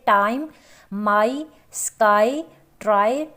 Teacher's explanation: ए आई का जो सिंबल है वो आई की आवाज़ को, यानी कि 2 जो साउंड हैं वॉवल, वो दोनों मिलकर एक आवाज़ दे रहे हैं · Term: डिप्थोंग्स